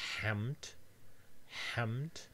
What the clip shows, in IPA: ħæmd